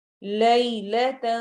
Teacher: جو تن کا نون ہے اس کو ہم نے چھپا کے پڑھنا ہے، واضح آواز نہیں ہوگی